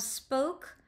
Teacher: spoke, which has both the sibilant sound and that hard plosive of the K, the stop of the K